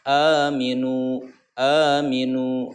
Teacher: Nu-nya, mi-nya pendek, a-nya panjang, nu-nya panjang dua harokat. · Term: mad tabi'i